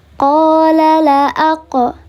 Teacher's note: Ada huruf qaf yang mati di tengah kalimat karena sukun asli, maka namanya adalah qalqalah sughra